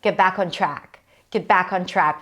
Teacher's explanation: We have a nice open a sound for the words back and track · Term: open ah sound